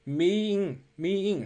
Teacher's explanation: 是一个元元连读，中间加入半元音▁ye